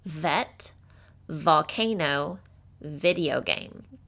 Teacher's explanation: um your throat should vibrate as you make the sound because it's a voiced sound which means you do use your voice box to make it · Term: letter V sound